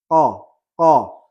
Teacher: Nah, makhrajnya berada di pangkal lidah. Sifat lazimahnya diantaranya adalah qalqalah, jahr, dan isti'ala. · Huruf qaf makhrajnya berada di pangkal lidah, kemudian bertemu dengan langit-langit atas yang sejajar dengannya, yaitu bagian langit-langit atas daging atau bagian yang paling belakang. Langit-langit atas yang paling belakang, huruf qaf, qa.